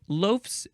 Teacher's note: the F becomes a V and then you add the Z it says compared to the first form of the suffix s